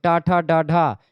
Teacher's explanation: जीभ मुड़ती है, मूर्धा में लगती है। तो टा ठा डा ढा, ये मूर्धन्य ध्वनियां है